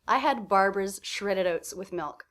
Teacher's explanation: what do you hear as being the stressed syllables I hear Barbara's shredded and milk